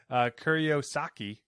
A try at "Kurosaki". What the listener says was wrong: Kurosaki? probably wouldn't roll the R's. Well, not that you did. I meant like the instead of Kuro is how I was thinking it.